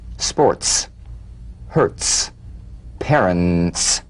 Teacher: feel a crisp percussive hiss between the tip of the tongue and the teeth when the s comes at the end of a word after